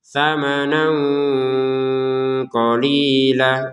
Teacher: perhatikan di sini ada tanwin bertemu qaf, maka kita baca dengan samar. Samanang, disamarin dulu baru ke qaf.